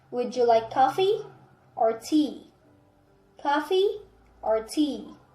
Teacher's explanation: coffee is rising tea is falling · It usually has the word or. It's rising on the first part and falling on the second. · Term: choice question